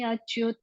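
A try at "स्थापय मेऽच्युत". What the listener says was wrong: सेनयोरुभयोर्मध्ये रथं स्थापय मे अच्युत नहीं है मैया, अ कहाँ है? रथम स्थापय मे च्युत, मे च्युत, स्थापय मे च्युत।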